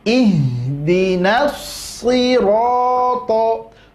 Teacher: Ihdinas sirato, di situ so-nya tebal, ro-nya tebal, to-nya tebal. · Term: huruf tebal